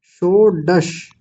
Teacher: पहले मूर्धन्य शकार और फिर बाद में है तालव्य शकार